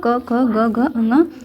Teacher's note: क वर्ग आपका हो जाएगा क ख ग घ ङ, तो इसका उच्चारण स्थान कंठ होता है